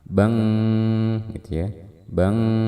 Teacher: Kita baca dengan gunnah yang disamarkan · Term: ikhfa